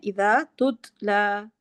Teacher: دوسرے والا جو تا ہے اس پہ قلقلہ نہیں کرنا